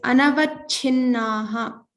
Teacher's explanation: make sure to pronounce the mahaprana here, and this is na, so double na.